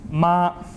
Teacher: described as a high pitch level tone